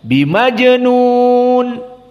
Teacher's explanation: mim bertemu dengan ba makhrajnya sama dari syafah sehingga ada ikhfa dan ikhfanya karena syafawi dia mimnya tidak ditutup wibukum tidak kum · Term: Ikhfa Syafawi